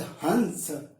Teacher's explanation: यहां पर ह जो होगा वो हमारे मुंह से बोला जाएगा, ये जो बिंदु है ये नाक से, हंस, और स फिर से मुंह को देकर। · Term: अनुस्वार